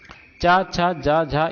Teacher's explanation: तो चा वर्ग का उच्चारण स्थान क्या हो जाएगा, देखिए का वर्ग कंठ होता है, उसके बाद तालव्य होता है, यानी कि तालव्य या तालु। तो चा वर्ग का उच्चारण स्थान तालु हो जाएगा